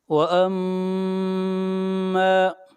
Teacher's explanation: وَأَمَّا، میم کو پر شد ہے، غنہ ہوگا اور میم کو کھینچ کر پڑھیں گے ایک الف کے برابر، یہاں پر الف مدہ ہے۔